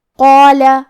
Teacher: ہمیں مد الف کو بھی بھاری آواز میں پڑھنا ہے